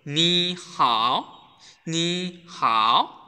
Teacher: যখন দুইটা third tone একসাথে বসে তখন হচ্ছে প্রথম যে থার্ড টোনটা আছে ওইটা হচ্ছে সেকেন্ড টোন হয়ে যায়